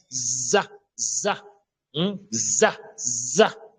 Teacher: la langue est plutôt collée avec les incisives inférieures en bas, hein, à l'intérieur en bas, et on rassemble les dents.